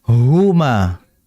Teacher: Nah, ha ini bersifat hamas. Keluarnya nafas atau udara. Atau biasa kita ketahui dengan istilah desisan.